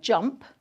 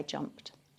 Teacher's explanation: That t suffix at the end of jumped is very brief.